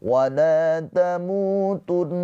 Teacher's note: Mu dibaca panjang dua harokat karena ada pemanjangnya ini waw sukun sebelumnya harokatnya dhammah mad tabi'i.